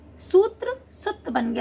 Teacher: संयुक्त व्यंजन से पहले दीर्घ स्वर ह्रस्व हो गया।